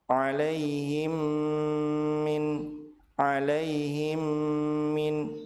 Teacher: Apabila mim sukun bertemu dengan mim, maka mim sukun dilebur ke huruf mim yang kedua dengan cara ditahan dua harakat dan disertai dengan ghunah. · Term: idgham mimi